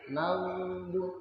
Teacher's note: Huruf gha. Ini ada sifatnya mengalir ya. Maghdu. Ada mengalir.